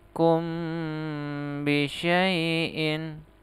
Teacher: Ini di sini dia Ikhfa safawi di sini mim sukun bertemu dengan huruf ba harus didengungkan